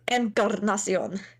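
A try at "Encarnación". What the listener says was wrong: You don't have to roll your R because it's not a double R, but yeah, it's good.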